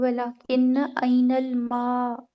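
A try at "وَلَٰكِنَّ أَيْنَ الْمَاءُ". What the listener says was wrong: वलाकिन, किन्ना, वलाकिन्ना ऐनल माउ। वलाकिन नहीं आएगा, अगर वलाकिन होता तो फिर आगे फेल होता।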